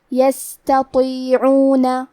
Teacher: تا حروف ترقیق میں سے ہے تو ہمیں تا کو پتلی آواز میں پڑھنا ہے. اور اس کے بعد تو ہے، تو حروف تفخیم میں سے ہے تو ہم تو کو بھاری آواز میں پڑھیں گے یستطیعون.